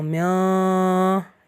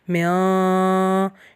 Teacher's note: نون ساکن حروف خلقی میں سے کوئی بھی حرف نہیں ہے، اس لیے ہم اس کی آواز ناک میں لے کے جا رہے ہیں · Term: غنہ